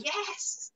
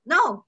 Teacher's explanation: Or kaya when you're angry you say no. So going down, yes or no. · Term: fourth tone